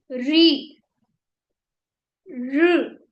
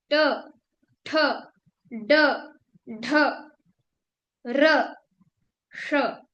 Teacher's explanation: ये सब मूर्धा से यानी ऊपर से बोले जा रहे हैं।